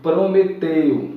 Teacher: a vogal E, ela é pronunciada com mais força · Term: ditongo decrescente